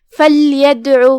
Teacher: یہاں دال پہ جزم ہے تو یہاں حکم القلقلہ ہوا تو ہم دال کو ہلاتے ہوئے یہ کلمہ پڑھیں گے